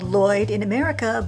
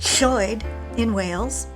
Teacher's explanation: Put your tongue on the roof of your mouth as if you were going to say L, but blow as if you were going to say H. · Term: double L